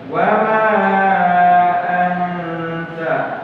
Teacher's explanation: nun bertemu tak, ikhfa samar